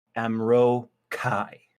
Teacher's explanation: careful to put the accent on the second syllable